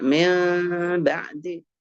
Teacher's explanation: Seperti hukumnya ikhfa syafawi. Kalau ikhfa itu ya enggak kamil kan, enggak mengatup.